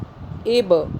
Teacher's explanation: बा पे कलकला हुआ यानी कि झटका दे के पढ़ेंगे, ये कलकला का हर्फ है।